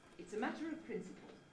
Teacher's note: it's produced at a comfortable pitch somewhere below the middle of the speaker's range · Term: low prehead